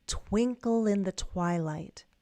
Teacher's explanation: We have two content words and two little function words. So you want to link and give stress to twinkle and give stress to twilight